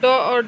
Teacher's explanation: उत्क्षिप्त व्यंजन के अंतर्गत ड और ढ आते हैं।